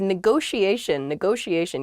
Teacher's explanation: there are two T's in this, but neither T is a hard T. They're both very soft, that sh sound, because they're followed by the I and another vowel, the she, a negotiation.